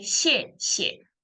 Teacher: the second one is actually turned into neutral tone. So you don't say 谢谢 fourth.